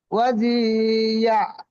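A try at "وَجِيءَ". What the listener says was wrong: ওয়াজি আ আলাদা। ওয়াজি আ।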